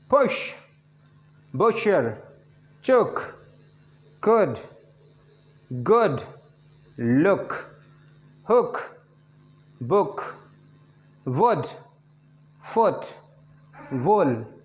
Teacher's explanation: जबान का जो हिस्सा उठा होता है, four part of the back, जबान के बैक का आगे का हिस्सा यानी कि फ्रंट से पीछे। लिप की position फेयरली close to lip rounding, ये थोड़ा सा लिप राउंडिंग थोड़ा सा गोला करना पड़ेगा, और क्लोज बंद रखते हुए बहुत ओपन नहीं कर सकते इसमें, जॉ को मीडियम ओपन करेंगे। · come to the next vowel number eight that is oh sound height of the tongue above half close